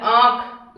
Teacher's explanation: नाक और मुह दोनों से आवाज आती है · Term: अनुनासिक